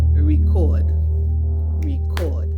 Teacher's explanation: The stress is on the second syllable, so it's a verb. But if someone says, oh, I still have records from the 80s, a record, you hear the stress on the first syllable, so that's a noun.